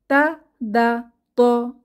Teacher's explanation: তা দা ত জিহবার আগা উপরের দাঁতের গোড়ায়